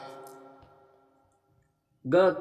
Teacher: ग कंठ अल्पप्राण व्यंजन वर्ण का उदाहरण है